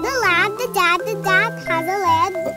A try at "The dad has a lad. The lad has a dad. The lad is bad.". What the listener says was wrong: You are too fast. The lad. slow.